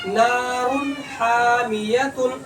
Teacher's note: اس را کی آواز کو جلدی ظاہر کر کے پڑھیں گے، آواز نہیں روکیں گے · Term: اظہار